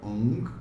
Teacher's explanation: ang é bem nasal, tá? E ele vem lá de trás da boca